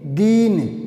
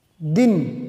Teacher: तो प्राय बड़ी मात्रा को, दीर्घ मात्रा को, गुरु मात्रा को लघु मात्रा की बजाय लगभग दुगुना समय लगता है।